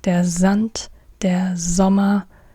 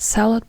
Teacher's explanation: Not S, but Z. This is the main difference between the German and the English S.